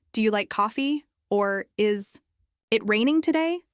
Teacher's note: Practice yes no questions with rising intonation